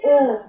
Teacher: यहाँ पे कंठ का भी उच्चारण होता है और ओठ का भी मतलब की सहायता होता है, दोनों का सहायता होता है, कंठ का भी सहायता होता है और ओठ का भी सहायता होता है। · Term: कंठ ओष्ठ